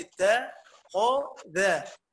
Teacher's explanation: الخاء حرف تفخيم قاعد بين حرفين مرققين